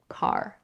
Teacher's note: The first sound is the voiceless velar stop k.